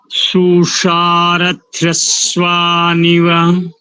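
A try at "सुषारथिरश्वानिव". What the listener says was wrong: रथ्रश्वा, रथ्रश्वा ऐसा नहीं, रथी रश्वा, अलग अलग बोलो। रथी रश्वा नीव। रथी अलग और रश्वा अलग करो।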